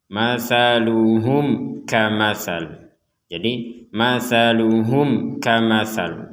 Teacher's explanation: Di sini ada mim sukun bertemu dengan kaf, maka ini kita baca jelas, jangan kita baca dengung.